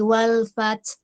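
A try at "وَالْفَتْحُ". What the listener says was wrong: Wal fath, ada huruf h-nya. H-nya baca. Enggak wal fath, bukan ta aja tapi h-nya ngalir.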